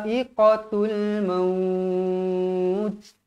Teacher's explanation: mad wajib muttasil, dibaca dengan kadar 4 atau 5 harakat